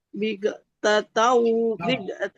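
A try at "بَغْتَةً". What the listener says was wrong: Patah bau, bukan bir. Kalau bir di bawah, ini patah. Bau.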